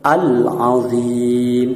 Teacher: Al-qamariyah apabila ada al-ta'rif atau hamzahnya wasal yang sambung dengan huruf qamariyah yang terkumpul dalam kalimat abghi hajjaka wa khaf aqimah, maka cara membacanya lam dibaca dengan jelas atau terang.